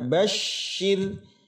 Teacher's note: Tasydid dengan huruf shin menyebar. Shir. Lalu huruf ra sukun sebelumnya ada baris kasrah maka dia adalah tarqiq tipis.